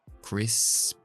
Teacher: Crisp. Es muy importante hacer la S primero, luego la P sin voz.